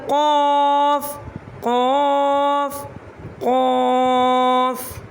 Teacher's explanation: قوف ادا ہوتا ہے جب زبان کی جڑ تالو کے نرم حصے سے لگے تو ادا ہوتا ہے